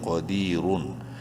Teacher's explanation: را کو منہ بھر کے پڑھیں گے پیش کی وجہ سے ، قدیرن، اور وقفاً اس ورڈ کا قدیر ہو جائے گا،